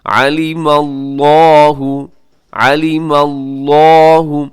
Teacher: لفظ اللہ سے پہلے میم کے اوپر زبر ہے، اسے آپ نے موٹا پڑھنا ہے